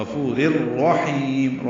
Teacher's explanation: تنوین کے بعد را آنے کی وجہ سے رر میں ادغام ہوگا، ادغام کامل ہے، یہ اس میں غنہ نہیں ہوتا